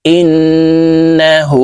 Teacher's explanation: গুন্নার সহিত পড়বো ইন নুন জবর না হা উল্টা পেশ হু হার উপরে উল্টা পেশ আছে তাই এই হা কে ঠোঁট গোল করে এক আলিফ টেনে পড়বো